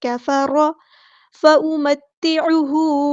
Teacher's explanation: ता तशदीद वाला तो 2 बार अदा करना है